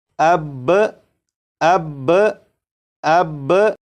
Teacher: با کو پڑھنے کے بعد آواز کو ختم نہیں کریں گے بلکہ آواز کو تھوڑی دیر کے لیے روکیں گے۔ آواز کو تھوڑی دیر کے لیے روکنے کے بعد جب آپ با کو پڑھیں گے تو یہ بالکل صحیح پڑھا جائے گا، جیسے اب اب اب۔